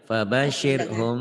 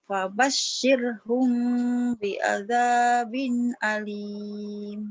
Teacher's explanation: Wabashirhum humnya ikhfa safawi. Wabashirhum humnya bindeng.